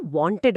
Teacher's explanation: మధ్యలో ఒక అచ్చు శబ్దం అంటే ఒక వావల్ సౌండ్ వచ్చి చేరుతుంది. అందుకే అది వాంటెడ్ అవుతుంది.